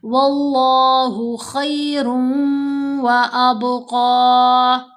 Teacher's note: बा पर कलकला, क़ाफ को मोटा पढ़ेंगे